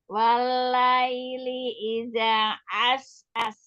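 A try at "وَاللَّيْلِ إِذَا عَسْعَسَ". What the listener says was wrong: Tenang dulu pada idza. Selesaikan dulu baru pindah hurufnya as. Walaili idza.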